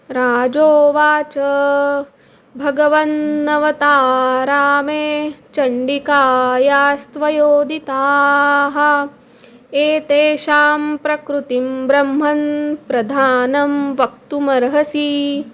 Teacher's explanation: इथे मी सगळे सगळीकडे अनुनासिक मकारंत म्हणून उच्चार घेतलेले आहेत